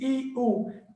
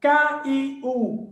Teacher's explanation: Essa parte aqui do iu é apenas um som. A gente não abre a boca duas vezes para dizer i, u. Não, a gente não diz i, u. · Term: Ditongo